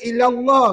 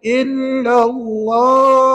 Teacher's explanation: Bukankah illa tu lam tu bersabdu, maka kena beratkan bacaan kita.